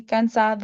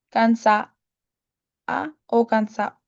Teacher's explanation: Words that would usually end with ado or ada would actually have the d removed. Taking for example tired would be canad or would instead be cana or canc.